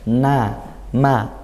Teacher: Huruf nun dan mim yang berharokat itu masih ada gunnahnya, namun dia tingkatan yang paling rendah. Na, ma, na ada, tapi sedikit.